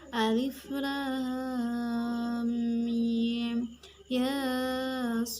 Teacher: Cara membacanya adalah 6 harokat atau 3 alif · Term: mat lazim harfi musybah